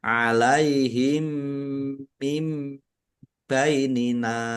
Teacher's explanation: Mim ditandai mimnya ada tasdidnya ditahan biar tampak mendengung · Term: idgham mimi